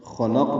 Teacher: خلق میں خا اور قاف پر ہیں، بیچ میں لام باریک ہے۔ قاف ساکن پہ قلقلہ ہوگا وقف کی صورت میں۔